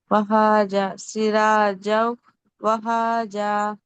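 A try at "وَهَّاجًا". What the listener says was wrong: హా మీద శ్రద్ధ ఉంది కాబట్టి దీన్ని ఒత్తి పలకాలి. వహాజా. సిరాజం. వహాజా.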